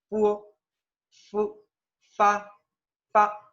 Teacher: que cuando la vamos a pronunciar estos dos dientes de acá los dientes incisivos verdad superiores van a tocar ligeramente el labio inferior